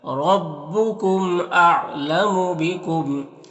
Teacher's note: را کے اوپر زبر تو را کو پر پڑھیں گے، میم میں اظہار شفوی ہوگا